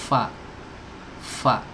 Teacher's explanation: Huruf fa itu tempat keluarnya ada di ujung gigi seri atas ya, ujung gigi seri atas bertemu dengan perut bibir bawah